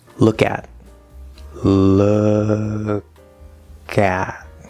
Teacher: very clearly we see that that k moves over